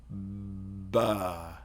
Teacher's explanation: So the voice onset time is after the plosive. And with b, you go b. So the voice onset time is before the plosive.